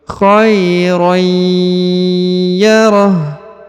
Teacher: huruf ha di ujung disukunkan atau dimatikan ya, karena berada di ujung ayat atau di ujung bacaan.